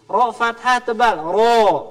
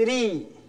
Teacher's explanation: kadang ro fathah tebal, ro. Ro kasroh tipis, ri.